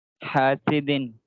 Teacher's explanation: ہاں سین میں سیٹی والی آواز، سیٹی والی آواز آنی چاہیے